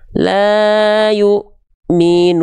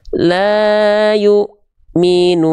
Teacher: Nadanya datar enggak ngayun tapi tetap ya kadarnya dua kali ayun.